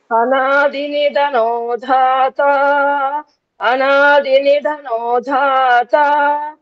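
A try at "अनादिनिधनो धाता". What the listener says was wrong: అక్కడ దాత ఏం స్లో చేయక్కర్లేదు, ఆ ఫాస్ట్ లోనే మీరు అది పోయి రీచ్ అవ్వాలి.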